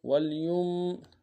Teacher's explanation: میم ساکن غنہ کریں گے